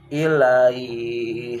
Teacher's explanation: Panjangin ilaih 6 harkat pada arid.